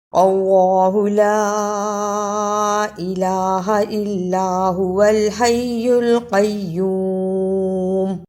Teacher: لا پر چھوٹی مد ہے، اس کو 2 الف کے برابر لمبا کرنا ہے، یعنی عام حالت میں 2 کھلی انگلیوں کو بند کرنا باری باری یا 2 بند انگلیوں کو باری باری کھولنا۔